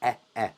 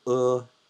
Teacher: In English, we pronounce E like elephant, eh, eh. But here, in Chinese, E is pronounced uh.